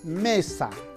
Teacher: la sílaba me es la sílaba tónica porque ahí está la mayor fuerza de voz